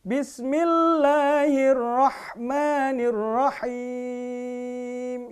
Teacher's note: haknya terdengar ada tekanan dari dalam tenggorokan ya